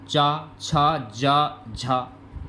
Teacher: चा, छा, जा, झा, ये तीनों ही तालु से बोलने वाले वर्ड हैं